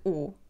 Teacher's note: Os artigos não são palavras acentuadas na frase, então tem o som reduzido, lê-se U.